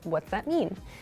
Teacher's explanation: in fast speech what does that mean can sound like what's that mean like the does part gets very very reduced